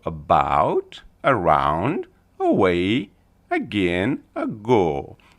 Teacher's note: This one we call a Schwa sound, ya quiet A, quiet A. So this is a very soft sound. We can hardly hear the A. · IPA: /ə/